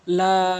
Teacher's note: তো যে হরফের উপরে থাকবে সেই হরফকে 4 আলিফ করে টেনে পড়বেন। 4 আলিফ পরিমাণ 3 অথবা 4 সেকেন্ড আপনি এ পরিমাণ টেনে পড়বেন